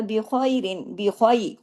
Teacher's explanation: ख्वा को हैवी भी करना है, याइलीन भी करना है